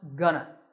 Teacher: Notice that it's not /'go.nə/. It's pronounced /'gə.nə/.